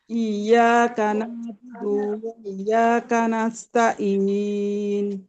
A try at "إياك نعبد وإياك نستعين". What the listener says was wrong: ইন কেন হবে? ইন, আইন ভিতর থেকে হবে। ইন হবে না আপু, ইন কথাটা কিসের থেকে হবে জানেন?